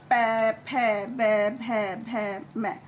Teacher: ये सारे के सारे होठ के द्वारा बोले जाते हैं। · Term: ओष्ठ